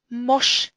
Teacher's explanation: the kametz is the sound of an o in an unstressed, closed syllable, and the sound of a long a in all other syllables.